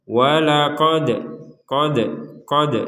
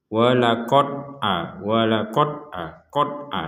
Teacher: huruf Dal sukun ini harus kita pantulkan caranya waqod qod qod jadi dipantul dipantulkan Jadi kalau sekedar walaqod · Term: pantulan